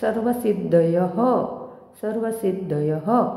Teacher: पंक्तीच्या शेवटी येणाऱ्या विसर्गाचे उच्चारण ह सारखे केले जाते.